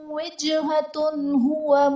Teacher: وجہتن ہوا میں تا کے اوپر دو پیش کی تنوین، تنوین کے بعد حروف حلقی میں سے ہاں آ رہا ہے تو یہاں پر اظہار کا قاعدہ ہوگا، یعنی تنوین میں ہم غنہ نہیں کریں گے۔